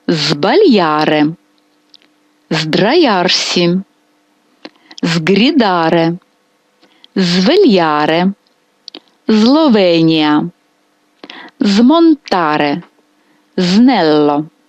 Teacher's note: Але перед дзвінкими приголосними б д г ґ або сонантом лу м м літера с теж буде дзвінка і ми її вимовляємо як звук з